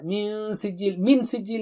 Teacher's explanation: پھر نون پر پھر غنہ آئے گا، چونکہ نون کو چھپائیں گے، نون کے بعد سین آ رہا ہے